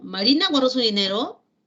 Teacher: la curva melódica final es ascendente